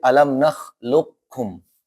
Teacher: Maka yang qaf masuk ke kaf secara sempurna. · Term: idgham mutaqarib